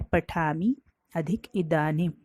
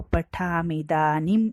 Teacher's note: अगर ह्रस्व ई के सामने अगर ह्रस्व ई आ जाता है तो दोनों को मिलकर दीर्घ ई हो जाता है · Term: सवर्ण दीर्घ संधि